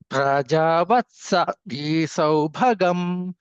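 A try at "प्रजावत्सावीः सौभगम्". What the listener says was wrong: వత్సా దీర్ఘం ఉందండి. ప్రజావత్సవి సౌభగం.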